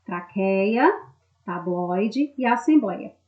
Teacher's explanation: de todos eles não receberam acento porquê Porque eles são né a sílaba tônica está na penúltima sílaba ou seja elas são paroxítonos ou seja elas não são acentuadas